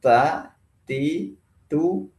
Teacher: sifat hams di sini adalah mengalirnya nafas ketika huruf disebutkan. Maka kalau kita ingin membuktikannya, kita bisa meletakkan tangan di sini di depan bibir.